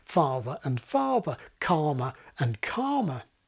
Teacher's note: My kind of non-rhotic accent has lost the contrast between ‘father’ and ‘farther’, ‘calmer’ and ‘karma’.